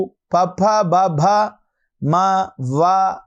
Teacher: ఇవి పూర్తిగా కూడా ఈ యొక్క పెదవుల ద్వారా మనం చేస్తూ ఉన్నాం ఓష్టముల ద్వారా మనం పలుకుతూ ఉన్నాము.